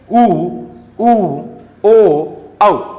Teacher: आप खुद बोल के देख लीजिए आपके जो ओष्ठ मतलब होठों की जो आकृति क्या बन रही है वो वर्ताकार बनेगी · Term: वर्ताकार स्वर